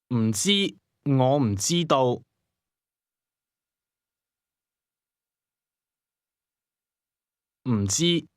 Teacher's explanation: It's the M sound with the falling tone.